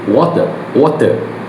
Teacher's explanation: Because of a distributional variation, the British speaker end on a pure soft schwa, the uh sound, like water, like that. The American speaker ends on a R colored vowel, where the vowel and the R are blended together. This makes the American word sounds harder and the British sounds word sounds softer or more breathier.